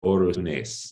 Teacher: And there, Rushtuni is rendered as Orunes in Greek, where you can see there's been an epenthetic vowel inserted before the R that undergoes rounding harmony and back harmony with the following vowel